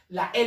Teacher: el flujo del aire es expulsado por los laterales por los extremos